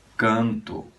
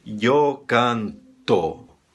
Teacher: Todas as palavras que acabam com O em português, e esse O é átono, não tem força, nós fazemos soar U. Nós dizemos canto, se escreve com O, e nós fazemos soar U, dizemos canto, eu canto, né?